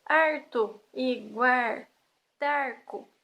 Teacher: nas regiões banhadas pelo legendário rio Tietê, utilizado pelos bandeirantes, as pessoas realmente trocam o L pelo R.